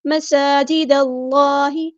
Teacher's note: دال کو ہم نے لام کے ساتھ ملا دینا، حمزۃ الوصل مڈروپ ہو جائے گا. اللہ کا لام یہاں پہ پر ہیوی ادا ہوگا لیکن دال باریک لائٹ رہتا ہے، دھیان رہے.